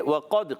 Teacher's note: اچھا وقد میں واو کے ادا کی ہونٹوں کی گولائی سے. وقد، قاف موٹا ادا ہوگا پورا حروف مستعلیہ میں سے. قاف کا مخرج زبان کی جڑ تالو کا نرم حصہ.